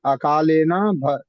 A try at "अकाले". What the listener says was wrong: अकाले, अकालीन नहीं, अकाले,